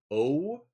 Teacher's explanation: If you say O, you'll notice that like when the sound begins your lips are unrounded, but as you know the sound continues they do round. And that's that would be here the O at the beginning the end of the sound right here. · when the sound begins, your lips are unrounded, but as the sound continues, they do round · The way we say o in English, it's a diphthong. So we actually have two vowels treated as one. And you could see this if you like say it slowly. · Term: dip thong